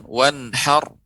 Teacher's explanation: Jadi ra-nya kita tebalkan